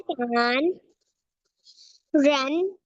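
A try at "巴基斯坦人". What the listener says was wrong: शाबाश, पाकिस्तान, तान नहीं थान, पाकिस्तान रन।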